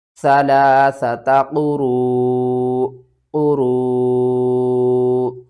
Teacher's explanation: جب بھی حمزہ ساکن ہوتی ہے تو اس کو جھٹکے کے ساتھ ہم پڑھتے ہیں